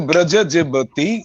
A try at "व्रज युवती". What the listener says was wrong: Lovely. শুধু ব্রজ যুবতী, ওটা অন্তস্থ জ।